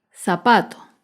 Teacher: el zapato se acentúa en la penúltima sílaba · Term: palabra grave